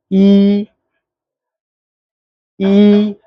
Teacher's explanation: थोड़ा सा इसको जोर से यानी थोड़ा लंबा खींच के बोलेंगे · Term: दीर्घ